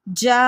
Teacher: مد متصل کو 4 الف کے مقدار کھینچ کر پڑھیں گے. جا، یہاں کھینچنا بہت ضروری ہے، یہاں بتایا گیا نا واجب ہے، کھینچنا بہت زیادہ ضروری ہے مد پہ.